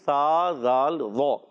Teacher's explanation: زال ادا ہوتا ہے زبان کا سرا اوپر کے دانتوں کے اندرونی کنارے سے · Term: حروف لثویہ